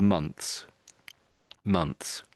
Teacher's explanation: So the Brits, almost all Brits, sort of try to say the TH, and it's sort of months, months.